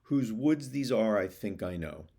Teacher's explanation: Let's begin with the first line of iambic tetrameter, four two-syllable units made up of an unstressed syllable and a stressed syllable